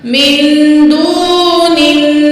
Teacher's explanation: नून को नून के साथ मिलाएंगे और नून में हम गुन्ना करेंगे। हार्ड गुन्ना होगा यहाँ पे, यानी कि सख्त गुन्ना होगा। · वाव साकिन है, माकबल पेश है, वाव मद है, 2 अलिफ का बराबर वाव को खींचेंगे, नून को नून के साथ मिलाएंगे और नून में हम गुन्ना करेंगे।